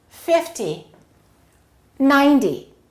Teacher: when the numbers end in zero we emphasize the first syllable